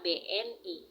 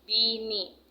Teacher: mengucapkan kata BNI menjadi kata bini adanya penambahan fonem vokal sehingga kata tersebut memiliki arti yang berbeda